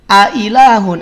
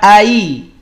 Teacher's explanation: Ada hamzah yang pertama fathah, yang kedua dia kasroh. Maka pastikan dua-duanya jelas. Tidak ai. Kalau ai nanti bukan lagi ke tahqiq.